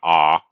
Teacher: Low, probably back for English